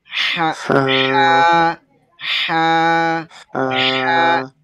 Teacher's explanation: কণ্ঠনালীর মধ্যভাগ থেকে আমাদের এই হায়ের উচ্চারণটা হবে একটু মনে হবে যেন চাপ, উচ্চারণ একটু চাপ হচ্ছে। · টোটালি জিহ্বাটা নিচে বসে থাকবে, এদিকে নাড়াচাড়া হবে না, শুধু আলতো করে ভিতর থেকে আওয়াজটা বেরিয়ে আসবে। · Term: হায়ের মাখরাজ